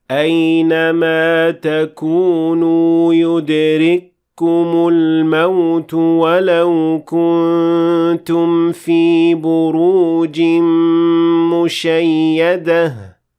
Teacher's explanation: the kaf will not be pronounced at all because it will be completely merged with the kaf that comes after it. That's why the kaf after it is doubled or has shadda.